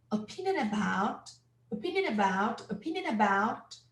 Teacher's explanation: about which starts in a vowel yeah and it's a very weak sound we call it the schwa